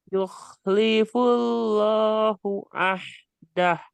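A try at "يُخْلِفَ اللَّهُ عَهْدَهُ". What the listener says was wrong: Nah, ini bukan full.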